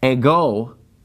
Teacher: Now, the word ego, it gets the accent on the second syllable. See, that accent is over the omega.